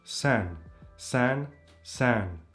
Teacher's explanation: This vowel can also be pronounced nasally, like in the word san